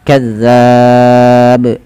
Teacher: pantulkan pada lafal ba karena dia menjadi huruf ba yang sukun. Nah di sini ada bacaan qalqalah.